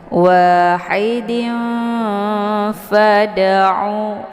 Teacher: ini harokat tanwinnya disamarkan, kemudian siap-siap masuk ke huruf fa dengan cara ditahan sehingga terbentuk suara yang mendengung. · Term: ikhfa awsat